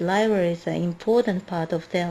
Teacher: So you just didn't put a lot of stress on are.